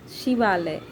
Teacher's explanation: यहाँ अ और आ मिलकर आ ही होगा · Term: दीर्घ संधि